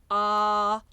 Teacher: the first sound is the dark A, ah, the second sound ha, and it travels from the back to the front of the mouth. So the dark ah is a little bit farther back.